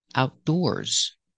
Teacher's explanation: when I say Outdoors the stress is on the second syllable